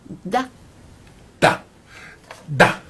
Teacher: La consonne D, par exemple, se prononce en donnant du bout de la langue au-dessus des dents du haut, da. Da, da, oui.